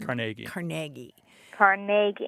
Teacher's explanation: Accent on the second syllable with more of an a than a e